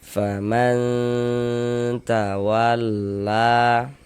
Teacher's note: Nah, kemudian karena dia didengungkan sehingganya di bagian man atau suaranya itu kita tahan ee kita panjangkan sejenak, kita gunahkan, kita dengungkan kira-kira sepanjang dua harakat. Faman tawalla la dibaca panjang.